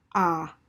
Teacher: that's the lowest part of your mouth the least tense of it and it's not rounded because your mouth just falls open